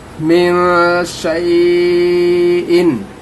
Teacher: यहाँ पर भी इख्फा होगा, नून साकिन के बाद हुरूफ़ इख्फा में से शीन आ रहा है, यहाँ इख्फा करेंगे, नाक में आवाज़ को रखेंगे